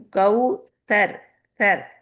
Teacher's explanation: سے جا کے اوپر کے 2 دانتوں کو ٹچ کرے گی، تو یہاں پہ کوئی وسلنگ نہیں آنی چاہیے